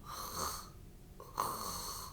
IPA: rrrrr